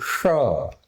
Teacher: મૂર્ધન્ય એટલે ટોચ, અંદરની જે ટોચ છે ને, આખી જીભ આમ વળીને ઉપર અડશે. શ, જેમ ટ ઊંચે જશે ને એ જ રીતે ફાડ્યો શ એ શ આમ બોલાશે.